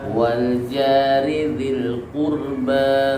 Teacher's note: Ba itu masuk qalqalah ba, tapi tidak dipantulkan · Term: qalqalah yang berharokat